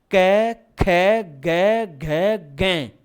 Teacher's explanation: इसमें कै वर्ग में मुख खुला रहता है और कंठ से सीधी ध्वनि बाहर, देखो कै ख गै घै गै, ये लो कै वर्ग।